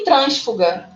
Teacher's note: E trânsfuga, que não é no fuga, ali fica no trans.